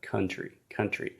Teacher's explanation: close to the US and then he said countries countries where he is separating the vowel sounds in the word country this should simply be one vowel sound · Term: schwa